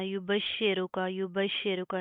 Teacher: شین زیر شی ہے، اس کو بھی آپ نے شے نہیں کرنا